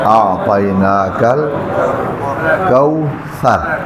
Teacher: تو یہ ثا نوک زبان اور سامنے والے دو دانت کا سرا، یہاں سے ادا کرنا ہے